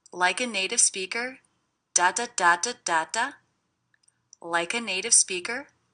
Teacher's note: I also notice the stress is big, small, big, small, big, small.